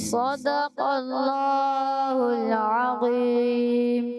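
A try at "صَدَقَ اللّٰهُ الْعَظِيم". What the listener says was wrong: speed نہیں دینا speed نہیں ہلکے سلو صدق اللہ العظیم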